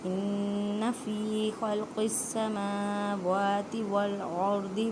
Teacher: ان نون مشدد گنہ کریں